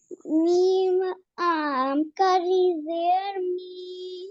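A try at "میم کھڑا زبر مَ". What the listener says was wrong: Meem khada zabar ma. Ma, mi, mu. I mean, don't let your voice enter into the nose. Ma, mi, mu. This voice is going inside your nose.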